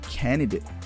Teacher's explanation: candidate with the dropping the D in the middle